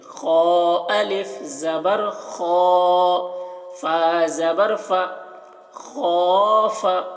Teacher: یہ خو کو پر پڑھ رہے ہیں اور خا میں الف مدہ ہے تو اس کو کھینچ رہے ہیں